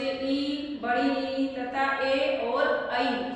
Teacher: जिह्वा के प्रयत्नों के अनुसार स्वरों के 3 भेद बताए हैं, अग्र, मध्य और पश्चय। अग्र स्वर वे होते हैं जिन स्वरों के उच्चारण में जिह्वा के यानी जीभ के अगले भाग का प्रयोग होता है, वे स्वर अग्र स्वर कहलाते हैं।